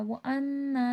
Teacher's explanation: نون مشدد غنہ ہوگا اور کھینچ کے پڑھا جائے گا۔